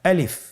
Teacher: আলিফে কিন্তু কোনো টান নেই, আপনারা বুঝতে পারতেছেন। আমি যখন আলিফ বলছি এর মধ্যে কোনো টান হবে না,